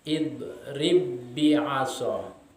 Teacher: Jadi huruf ba yang pertama itu hilang, dimasukkan ke dalam huruf ba yang berharokat.